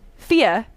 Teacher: I'm from the north of England and feia is how you would say fear